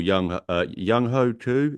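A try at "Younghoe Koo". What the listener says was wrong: Young Wei, not Young Ho. That would be a very odd way of pronouncing it.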